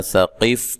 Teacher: قاف کو موٹا کرنا ہے، ہلانا ہے، حروف قلقلہ میں سے ہے. تا کو باریک، لو و مدہ ہے.